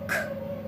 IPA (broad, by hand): k